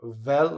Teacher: Vel, my vocal cords are going. Note the bottom lip going across the top teeth. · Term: voiced fricative